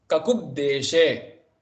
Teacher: the Bha, Mahaprana changes to the Alpa Prana Ba